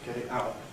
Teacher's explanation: we have American voice T, glottal stop, and regular T in those three respective positions